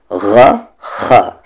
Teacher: خا کا مخرج اپر تھروٹ، جہاں سے غین کا مخرج بھی نکلتا ہے،